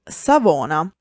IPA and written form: saˈvona (Savona)